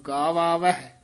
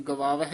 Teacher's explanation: ਦੋਵੇਂ ਕੰਨੇ ਬੋਲਣੇ ਹਨ ਗਵਾਵਹਿ ਨਹੀਂ ਕਹਿਣਾ